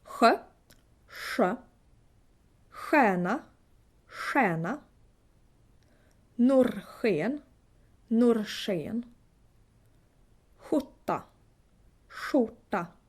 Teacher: In the southern part of Sweden, southern half, kind of, you would say ch. In the northern half of Sweden, you would say sh.